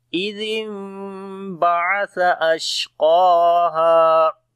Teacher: نون ساکن کے بعد با آ گیا، اس وجہ سے نون کو جو ہے وہ میم کے اندر بدلیں گے ، جس کو اقلاب بولتے ہیں، تو یہاں قلب ہوگا یعنی